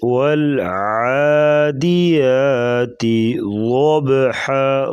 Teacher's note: بسم اللہ الرحمن الرحیم والعادیات ضبحا عین گلے سے نکالیں گے، والعادیات ضبحا، ضاد کو پر پڑھیں گے موٹا اور با پہ قلقلہ کریں گے